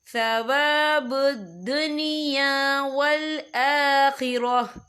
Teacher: وقف کی صورت میں ہا ساکن ہو جائے گا